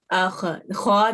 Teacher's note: زبان اٹھ رہی ہے، زبان کا بیک تالو سے ٹکرا رہا ہے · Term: مستعلیہ